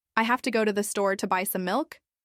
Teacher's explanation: But if you say I have to go to the store to buy some milk with the natural stress pattern, it sounds much smoother. The key words have, go, store, and buy are stressed while the less important words I, to, and some are unstressed.